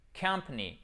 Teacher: Le A, il est prononcé comme un schwa. Le schwa, vous savez, c'est ce E renversé.